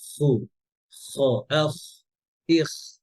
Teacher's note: এই যে খুটা গলার শেষ থেকে যেন হয়